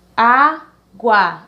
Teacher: o guá é o mais fraco e o A é o mais forte, o primeiro A da palavra